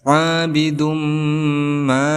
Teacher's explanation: Abidum di sini dihukumi sebagai mad tabi'i, bidum di sini dihukumi sebagai gunnah, idgham bi gunnah. Karena ada dhammah tain bertemu dengan huruf idgham bi gunnah yaitu mim, maka cara bacanya kita dengungkan